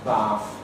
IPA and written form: baːθ (BATH)